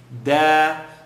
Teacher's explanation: dal, tip of the tongue behind the top two teeth.